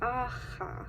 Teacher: you just block the air of the back of your throat with your tongue and basically it sounds like aha you hear this in check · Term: voiceless viewer fricative